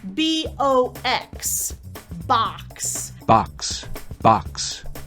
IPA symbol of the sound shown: ɑ